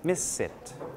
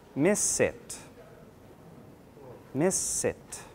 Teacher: For miss it, the S connects with the I, miss it. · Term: liaison